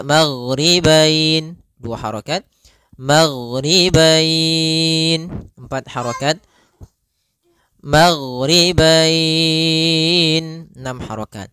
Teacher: dengan huruf ya sukun atau wau sukun di akhir bacaan panjang untuk mad lin sendiri Kita boleh panjangkan dua harakat boleh empat harakat boleh pula En harakat maka kita boleh membacanya magribain dua harakat